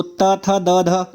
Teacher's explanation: तो त, थ, द, ध आप बोल के भी देखें, बोल के अगर आप देख रहे हैं तो आपके समझ में आना चाहिए कि ता वर्ण जो है उसको, उसमें जब आप बोलेंगे तो आपकी जो जिह्वा है वो दांत को पीछे से स्पर्श करती है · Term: दंत वर्ण